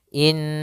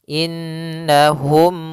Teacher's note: kita tahan dulu suara nunnya in baru dibaca na inahum humulah di sini ada mim mati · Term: bacaan gunah